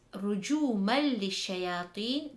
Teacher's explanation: the tanween is followed by the letter lam, so it is idgham without ghunnah